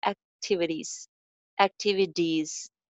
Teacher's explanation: The activities mein jo t hai becomes flap t